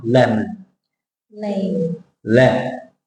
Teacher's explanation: And the O becomes the schwa sound. It's the O schwa, lemon, not lemon.